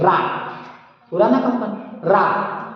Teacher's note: जो रा है ना, रा को लुंठित बोलते, रा को क्या बोलते, लुंठित और प्रकंपित, क्योंकि जीभ इसमें आलोड़न करती बोलने में, कंपन होता देखो रा, पूरा ना कंपन रा, इसलिए रा को प्रकंपित बोलते और रा को लुंठित बोलते।